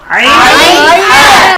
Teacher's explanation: কণ্ঠনালীর মধ্যখান থেকে, হলকের মধ্যখান থেকে দুটি হরফ উচ্চারিত হয়, আইন হা।